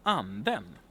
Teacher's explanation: >> And then we have accent number two, the grave accent, which is the fun accent. It's a melodic musical accent that we have in Swedish. And the remarkable thing here is basically that yeah it we have two syllables that ha that are stressed with this accent.